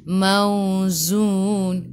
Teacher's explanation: sifat hurufnya z, kena bunyi macam lebah kan, jadi mauzun.